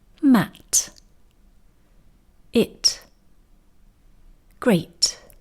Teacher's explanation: If we say these words slowly, carefully, and with no other words coming after them, we can allow air to escape at the end of the word, at the end of the T sound